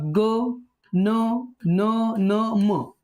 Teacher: यांचा उच्चार करताना त्या वर्णाच्या उच्चार स्थानाबरोबरच नाकातून म्हणजे नासिकेतून होतो. पण त्यांचे प्रत्येकाचे उच्चार स्थान वेगळे आहेत. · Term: अनुनासिक